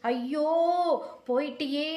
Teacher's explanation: கதறி அழுகும் போது மாத்திரை நீண்டு ஒலிக்கும்